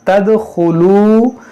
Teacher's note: दाल में कलकला करेंगे